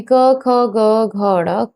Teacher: लेकिन अभी हम संक्षिप्त संक्षिप्त रूप में समझते हैं कि जो आपका क वर्ग है यानी क, ख, ग, घ, ड, क वर्ग का उच्चारण कंठ से होता है